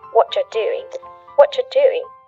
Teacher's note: the end of the word doing, that G, also gets cut out. What you're doing.